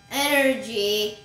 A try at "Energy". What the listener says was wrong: Why did your energy sound like lack of energy?